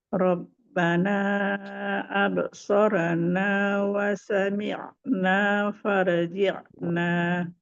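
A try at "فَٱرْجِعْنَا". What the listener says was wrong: Ro-nya tebal.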